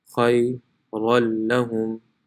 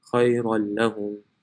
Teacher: So it will be pronounced khayran lahum. The noon is no longer pronounced.